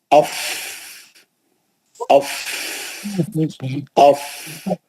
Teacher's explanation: باقی کے تو 2 دانت ہے اوپر کے، سامنے کے اوپر کے بڑے دانت، ثناء علیا، سامنے کے 2 بڑے دانت نیچے کے ہونٹ پہ بیٹھتے ہیں سختی سے، اور پیچھے سے ہوا خارج ہوتی ہے. وہ ہوا کے پریشر کا نام، وہ ہوا سے جو آواز نکلتی ہے اس سے وہ ہے فا کا مخرج.